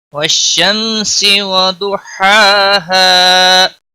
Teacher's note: والشمس وضحاها، ضاد کو موٹا پڑھیں گے، حروف مستعلیہ میں سے ہے۔ ہا کے اوپر کھڑی زبر ہے، 1 الف کے برابر کھینچ کر پڑھیں گے، اور ہا وسط حلق والا ہے۔ · اظہار شفوی ہوگا، یہاں پر گنہ نہیں ہوگا